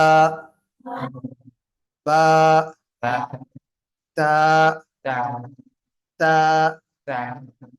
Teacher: நாவின் நுனி மேல்வசை நடு பருக்கடைய ஓரங்களை டச் பண்ணுங்க